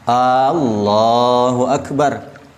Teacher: Dan lafaz Allah, huruf alifnya jangan dipanjangkan.